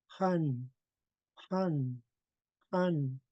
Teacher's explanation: we're blowing lots of air from the back of the throat